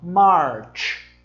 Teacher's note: não é esse CH, tem um som carregadinho assim de tch